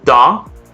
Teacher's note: for all of the t's they go to a d sound